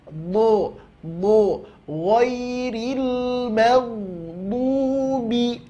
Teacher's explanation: Tepi lidah bahagian pangkal bahagian belakang, tempelkan ke gigi geraham atas, baik kiri maupun kanan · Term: huruf do